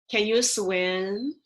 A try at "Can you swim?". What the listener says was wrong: You could go up a little higher on the second part.